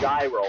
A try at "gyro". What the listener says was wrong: A euro. You don't pronounce the G. I think it's a euro.